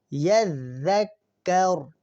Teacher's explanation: اور زال کو پڑھنے کا طریقہ یہ ہے کہ ہماری زبان کی نوک سامنے والے دانتوں سے تھوڑی سی باہر رہے گی تو زال ادا ہوگا